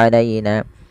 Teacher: lembutkan pada lafal ya yang didahului dengan fathah karena ia bacaan lin